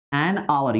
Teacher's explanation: ಅವರ್ so ಇಲ್ಲಿ ಏನಾಗ್ತಾ ಇದೆ ನೋಡಿ ತುಂಬಾ ಇಂಟರೆಸ್ಟಿಂಗ್ ಇದು ಆನ್ ಅವರ್ ಎಚ್ ಸೈಲೆಂಟ್ ಆಗ್ತಾ ಇದೆ ಇಲ್ಲಿ ಅ ಸೌಂಡ್ ಬರ್ತಾ ಇದೆ ಆನ್